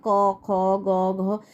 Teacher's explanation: তালু শক্ত তালুর ঠিক একটু পেছনের দিকে দেখো নরম তালু রয়েছে সেই নরম তালুগুলো দিয়ে অনেক উচ্চারিত হয় ক খ গ ঘ এগুলো